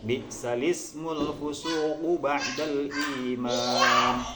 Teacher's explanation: Jadi harokatnya tersebut adalah dipindah kepada lam, harokat hamzah, ya, al-ismu, ya, al-ismu itu harokat kasrohnya dipindah kepada lam sehingga menjadi bi'salismul fusuq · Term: naql